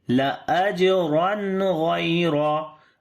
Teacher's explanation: After the tanween, the next letter is ghain. We make izhar here of noon